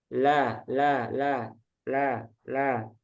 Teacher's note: kalau lam dia melencengnya ke samping